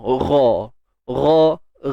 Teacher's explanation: Ghain kena tebal lah. Hujung kerongkong.